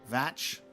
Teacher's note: mh is a v and ch as in loch, not a k sound but a throaty ch sound